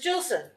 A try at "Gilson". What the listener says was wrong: It's a hard G.